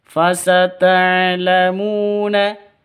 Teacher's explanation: mu panjang dua ketukan karena ada wau mati diawali dengan domma